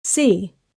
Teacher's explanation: Before the vowel i, siot softens toward sh.